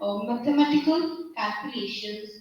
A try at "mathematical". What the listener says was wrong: Firstly, it is mathematical, okay, not matha. Mathematical calculations, mathematical calculations and statistical studies.